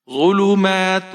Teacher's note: فیہ، یہاں پر فی کو آپ ایک الف کے برابر کھینچیں گے، ہا کو بغیر کھینچے پڑھنا ہے۔ ظلمات، زوا کو موٹا پڑھیں گے، بغیر کھینچے پڑھیں گے، لام کو بھی بغیر کھینچے پڑھنا ہے، میم کو آپ کھینچ کر پڑھیں گے، کھڑی زبر ہے ایک الف کے برابر۔